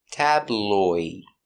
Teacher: It's a light L. The tongue's in the front.